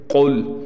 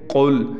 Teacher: تو اس بات کی، اس غلطی کو دور کیا جائے اور اس بات کا خیال رکھا جائے کہ اس حرف کو ہمیشہ موٹا پڑھنا ہے، منہ کو پر کرنا ہے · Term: موٹے حرفوں